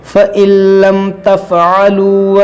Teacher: لَّمْ، یہاں پر ان لم ہے لیکن یہاں پر ادغام ہوگا، یہ نون لام میں داخل ہو جائے گا